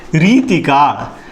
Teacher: उच्चार नीट करा. री दीर्घ ती ऱ्हस्व.